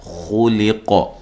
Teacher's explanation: خا کو موٹا اور قاف کو ساکن کرتے ہوئے قلقلہ کرنا ہے